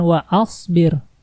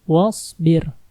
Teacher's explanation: sini banyak yang menyebutnya disini washbir padahal disitu Hamzah washol karena Hamzah washol kalau di tengah itu tidak dibaca